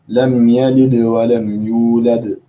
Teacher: technically the last dal is of a high level of qalqala than the one in the middle.